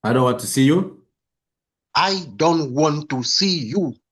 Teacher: now you are putting an emphasis on every single syllable.